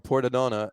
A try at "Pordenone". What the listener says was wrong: Pordenone. Pordenone. No, you didn't say Pordenone. That's not how you pronounce it. Oh, you said ah.